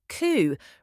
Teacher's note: It's not coupe or cowpea. The P is completely silent. It's just coup, rhymes with two. It's French.